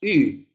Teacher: El U, la U en castellano, en afrikaans tiene dos sonidos diferentes. La primera es similar al I del castellano, pero con los labios más redondos.